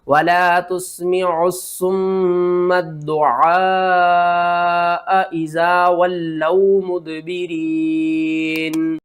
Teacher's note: اس مد کا نام ہے مد متصل، اس کو آپ نے 5 الف کے برابر کھینچ کر پڑھنا ہے